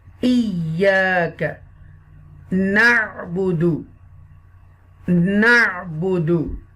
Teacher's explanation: This na sound will connect with the Ain Sakina because Ain has a jazm sign over there and this is the Sukoon sign.